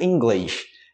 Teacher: E tem uma forma também que é mais puxado o sotaque, o sotaque carioca, que seria tipo: inglêish, com esse sh no final.